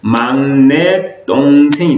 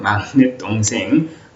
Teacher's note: 막내와 동생이 결합되면서 된소리 대기가 일어납니다. 뒤에 동생의 디귿이 예사소리가 된소리로 발음이 나죠.